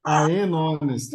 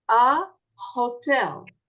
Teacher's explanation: But honest does not have a sound for the H. The H does not sound.